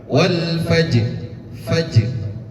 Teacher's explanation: Jim ini salah satu huruf qalqalah dan dia sukun juga asli. Tentu qalqalah sughra.